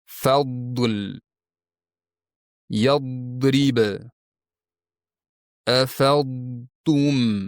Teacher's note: Tilning uchi esa yuqori olt tishlarga ichki tarafdan tutashgan milkka bosimsiz tegadi. Tilning orqa qismi ham koʻtariladi, chunki bu yugʻon o'qiladigan harf hisoblanadi. Natijada tilning oʻrta qismida havo toʻplanadigan chuqurcha paydo boʻladi.